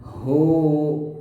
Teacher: Nah, ini hu-nya hu yang besar. Sini pangkal tenggorokan hu, dan panjangnya dua harokat ya, atau satu ayunan.